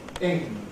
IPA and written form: ɪŋ (‘-ing’)